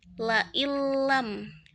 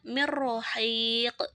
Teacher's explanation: memasukkan suara nun sukun atau tanwin sepenuhnya ke dalam huruf la atau ro gitu, tanpa disertai dengan dengung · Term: idgham bila gunnah